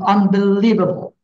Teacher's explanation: You need to give emphasis on leave.